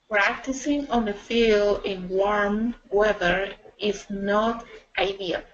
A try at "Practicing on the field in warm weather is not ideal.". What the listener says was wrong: Perfect, yes. And then in the future, yeah, you can read it a little bit faster,